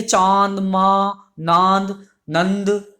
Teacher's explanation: नाक से भी इनकी हवा निकलेगी, यानी कि हवा जो है मुख के साथ साथ नाक से भी निकलेगी। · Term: अनुनासिक स्वर